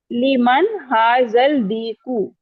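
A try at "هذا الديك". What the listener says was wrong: حاضل دیکو نہیں ہوگا، حاضت دیکو، لام نہیں پڑا جائے گا، حاضت دیکو،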